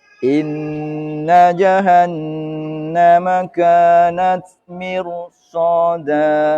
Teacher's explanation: Kita sambung baris berikutnya, membahas ro sukun diawali kasroh tapi dibaca tafkhim